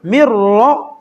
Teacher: جب را پر زبر ہو تو را پر پڑھا جاتا ہے، میم کو را کے ساتھ سختی سے ملائیں گے مر را، اور را کو با کے ساتھ سختی سے ملائیں